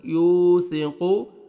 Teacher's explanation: سین میں آواز نہیں جانا چاہیے آپ کا، یوثقو، قاف پڑھیں گے موٹا کر کے